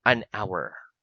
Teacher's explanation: because the letter H in the word hour is silent